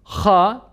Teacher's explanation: boğazımızın biraz daha küçük dilimizin dibine doğru olan yakın bölümünden ha fırlatarak bunu okuruz ha esesi ile beraber hı Ötesi ile beraber hu şeklinde telaffuz